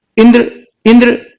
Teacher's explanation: ई पे हम बहुत रुक नहीं रहे हैं, एक ही साउंड के बराबर का समय ले रहे हैं, इसलिए ये छोटी ई की मात्रा होगी।